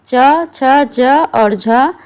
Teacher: स्पर्श संघर्षी व्यंजन वे व्यंजन होते हैं जिनके उच्चारण में हवा पहले रुकती है और फिर संघर्ष के साथ बाहर निकलती है।